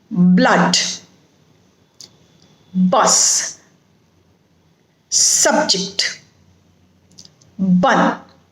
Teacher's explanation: the sound is ah a very short very brief a sound it is used in words like blood bus subject but then